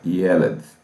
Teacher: A sílaba tônica é a primeira